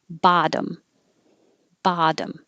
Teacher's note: You have to say the T's, which change to D's.